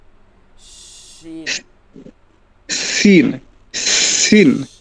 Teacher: জিহ্বার আগাটা দাঁত থেকে পৃথক রাখেন একদম দাঁত থেকে পৃথক